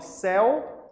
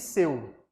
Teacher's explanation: Quem é aberto? Céu. Seu é fechado, percebe? Seu, céu. A pronúncia é aberta. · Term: ditongo aberto